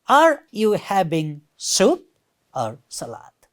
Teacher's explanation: so goes up and then down · rising falling, first rises then falls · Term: rising falling intonation